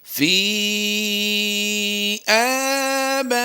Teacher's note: बा के बाद हमज़ा उसी कलमे में है तो हमने यहाँ पर मद्दे मुत्तसिल करते हुए इसे लंबा करना है